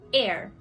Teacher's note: Notice that the H is silent.